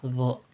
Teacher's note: Jadi ketika kita mengucapkan d lidah itu menyentuh kepada gigi bagian depan gitu d. Makanya makhrajnya itu asnan.